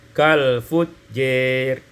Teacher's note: imalatu fathatil jim wal alif, dengan imalah fathah jim dan alif sehingga kita baca kal fujjir.